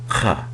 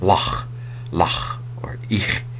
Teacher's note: It's a throat, a little bit of a guttural H, a little hard kind of K sound.